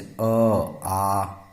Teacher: कंठ और निचली जीभ के स्पर्श से होता है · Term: कंठ्य वर्ण